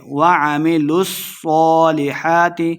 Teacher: مد ہے، 2 حرکات لمحہ کر کے پڑھیں گے، وَعَمِلُوا الصَّالِحَاتِ، صاد مشدد ہے، لام کو صاد کے ساتھ ملائیں گے اور صاد کو ہم نے موٹا کر کے پڑھنا ہے